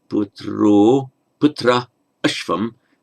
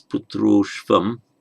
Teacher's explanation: if you get a word, ending in ah, and the next word begins with a short ah, they merge to become o, and the a of the next word drops out, often represented by a comma in Romanization, or the avagraha sign, somewhat like comma, apostrophe for the missing vowel, represented by the avagraha.